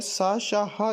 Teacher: सा शा हा जो है वो संघर्षी व्यंजन होते हैं